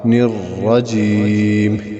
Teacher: را کے اوپر زبر ہے، اس کو پڑھیں گے موٹا